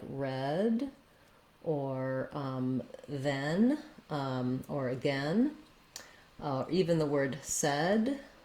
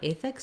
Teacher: Because letter E, for some languages, you associate it with an A sound, so you might be saying this more as ethics. In American English, it's a very relaxed, lax sound, eh. So it's the same sound we have in words like red, or then, or again, or even the word said.